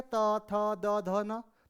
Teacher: जब आप त का उच्चारण करेंगे त, थ, द, ध, न, तो त का उच्चारण में आपकी जीभ जो है वो आपके दांतों पे लग रही है